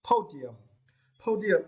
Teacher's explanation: for this word, you need to stress the first syllable